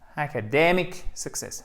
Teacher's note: comme c'est un mot un peu long, qui a besoin de structure, vous avez un accent tonique secondaire qui se trouve sur la première voyelle